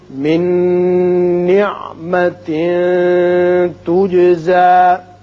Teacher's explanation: نون کے بعد جب نون آ جائے تو ینمو میں سے ہے، ادغام بغنہ ہوگا